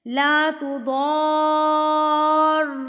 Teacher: ضاد کو آپ نے پورا کھینچ لینا ہے 4 حرکات کے برابر، پھر آپ نے را پہ رکھ کے تھوڑی سی رگڑ دینی ہے کیونکہ تشدید ہے نا. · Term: مد لازم